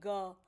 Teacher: गहरी और गले से निकलने वाली ध्वनि है